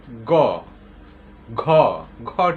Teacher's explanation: গটা বলে দেখো, মনে হয় যে আটকে যায়। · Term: ব্যঞ্জন ধ্বনি